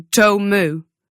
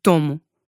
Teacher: The issue with the vowel in tome is that it's actually 2 vowels. You start at O, but then you go to U, om. Portuguese stays put. We say tomo.